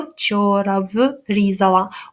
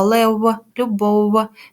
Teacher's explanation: в близький до голосного у проте він не утворює склад тому його називають у нескладовий як же перевірити що ж нам